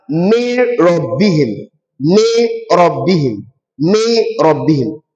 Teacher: we are not applying any gunnah under idgham bi ghairi gunnah. We only apply idgham alone which is insertion.